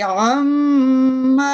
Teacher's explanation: पहले तो नून मुशद्दद की वजह से आवाज ठहरेगी